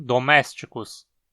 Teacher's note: esse i fica na penúltima sílaba e ele é curto.